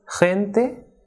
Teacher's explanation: But when it comes before the vowels E and I, it is strongly aspirated, like H.